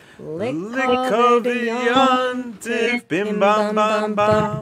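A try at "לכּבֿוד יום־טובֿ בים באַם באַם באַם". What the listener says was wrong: Did we change keys? We went a bit flat. Lick-o-vid-yon-tif, bim-bam-bam-bam. And if you listen really closely, every time they say lick-o-vid-yon-tif, there's almost an extra syllable in there of Lekovidiyontif bim bam bam bam, except I'm exaggerating it there a bit so you can hear it.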